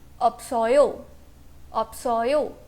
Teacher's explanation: यहाँ पे जो सेकेंड वाला फाइनल कॉन्सोनेंट था वो मर्ज हो गया है वॉवल के साथ